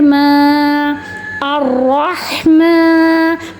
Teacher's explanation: اسے 1 سیکنڈ تک کھینچ کے پڑھیں گے, کیونکہ کھڑا زبر کو ہم مد اصلی کہتے ہیں